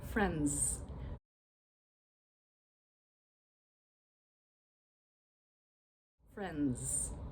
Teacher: in fast speech, and you've probably heard this, people will just say friends. Friends. And all you can really hear is the N and the Z sound, friends, friends.